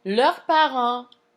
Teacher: leur is going to have an S at the end, but we don't hear it because parents starts with a consonant